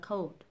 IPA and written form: koʊd (COLD)